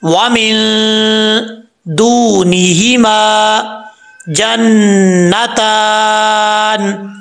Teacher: میم کے آگے الف ہے, ایک الف کی مقدار لمبا کیا جائے گا. نون کے اوپر شد ہے, یہاں پر غنہ ہوگا ایک الف کی مقدار. تا کے اوپر کھڑا زبر ہے, ایک الف کی مقدار لمبا کیا جائے گا.